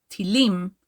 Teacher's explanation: the word missiles in Hebrew is pronounced by stressing the last syllable in the word tilim